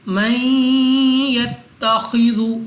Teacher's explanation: Next ہمارے پاس نون ساکن کے بعد یا، حروف یرملون میں سے ہیں، ادغام کا قاعدہ ہے، یہاں پہ بھی غنہ کر کے پڑھیں گے۔ اس کے بعد خا ہے، مستعلیہ ہے، موٹا پڑھیں گے یعنی منہ اور آواز کو کھول کر، اور ذال کو نرمی سے پڑھنا ہے، من یتخذ۔